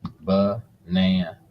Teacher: The stress is on the second syllable. So the second syllable will be longer, louder, and a little bit higher.